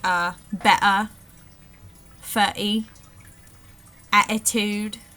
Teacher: and then we have the glottal stop which is very important